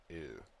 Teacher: It's a high, front, rounded vowel, with the tongue position like E, but with the lip rounding like O.